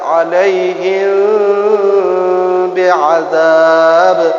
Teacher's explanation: Ikhfa syafawi ini samar 2 bibir.